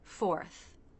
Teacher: the unvoiced TH, where the front part of the tongue comes just out of the teeth, not too far, and air lightly passes through.